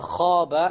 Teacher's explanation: Notice the ألف how heavy it is. Why? Because the خاء is of the letters of تفخيم or heaviness.